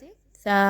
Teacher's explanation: وہی زبان کی نوک آپ کے مسوڑوں کے پچھلے والے حصوں سے لگے گی، جو مخرج تا کا ہے اسی سے ملتا جلتا مخرج تا کا بھی ہے، بس یہ ہے کہ زبان کی نوک کو تھوڑا آگے کی طرف اوپر کے دانتوں کے ساتھ ملائیے تو وہاں سے تا ادا ہوگا۔